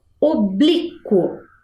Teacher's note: Eu escutei a vogal U ali no final, no meinho entre a letra Q e a letra O.